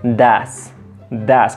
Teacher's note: si queremos sonar un poco más nativos, podemos cambiar esa O por una A y suena un poco más natural